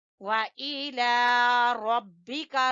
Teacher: रा को पुर पढ़ेंगे और बारीक काफ है, इला रब्बिका फारुगब, फारुगब, रा को पुर और गैन को भी पुर, बा के ऊपर कलकला, फारुगब।